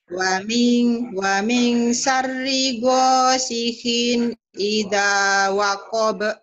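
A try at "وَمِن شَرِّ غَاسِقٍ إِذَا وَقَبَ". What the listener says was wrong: lu masih gosihin bukan gosihin gosikin kin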